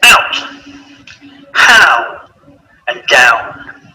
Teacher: Ow. Starting on the a and finishing on the or oo.